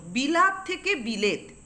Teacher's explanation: একটা স্বরধ্বনি ছিল সেই আকারটা পরিবর্তিত হয়ে একার হয়েছে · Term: স্বরসঙ্গতি